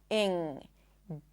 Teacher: Technically it's a lax /ɪ/ sound, and then an /ŋ/ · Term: ing suffix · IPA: /ɪŋ/